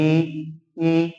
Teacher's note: जिह्वा का अगला भाग पूरा ऊपर उठ गया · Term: समृद्ध स्वर